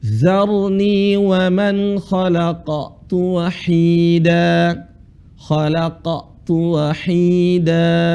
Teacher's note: di sini ada huruf qaf yang sukun, tetap dia harus ada qalqalahnya, walaupun bukan di akhir